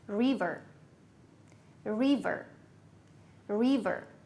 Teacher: look at the stress the stress goes to the first syllable